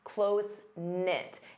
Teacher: Notice the K is silent.